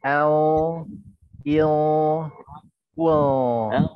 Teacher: Al, il, Well, nah gitu, L, sama nggak nempel ininya, ujung lidahnya nggak nempel, tapi pangkal lidahnya naik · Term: yang tebal